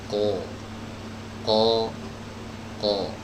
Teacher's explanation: lidah bagian belakang kita itu harus diangkat ya supaya suaranya itu menebal · huruf qaf ini adalah huruf yang keluar dari pangkal lidah